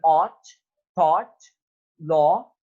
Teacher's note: the back of the tongue is raised towards the soft palate to a height between the half open and half closed position. The lips are rounded more closely than for all sound described closed position.